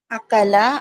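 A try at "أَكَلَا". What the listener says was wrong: قاف نہیں، کاف کاف کاف.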